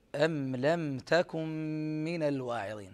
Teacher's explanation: هذه الميم مظهرة قبل اللام، كما أنها مظهرة أيضا قبل حرف التاء. النون هنا مضغمة في الميم.